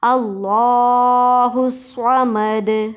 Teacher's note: उसके बाद दोबारा एंड पे वही आ रहा है वक्फ़, और वक्फ़ की वजह से ये दाल क्या हो रहा है, साकिन, और इस दाल साकिन होने की वजह से हम दाल के ऊपर क्या कर रहे हैं, قلقلہ کر رہے ہیں، یعنی دال کو ہم ہلائیں گے